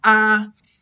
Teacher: the first tone is a high flat